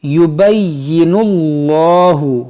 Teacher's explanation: اس میں جلالت سے پہلے پیش ہے، اس کو بھی موٹا کریں گے